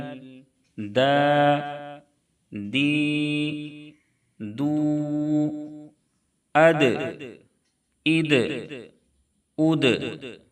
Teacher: दाल का मखरज है जुबान की नोक सनाया औलिया की जड़ यानी जुबान की नोक ऊपर के सामने वाले दोनों दांतों की जड़ में लगेंगे और दाल भी हरूफ कलकला में से है इसलिए दाल में भी कलकला होगा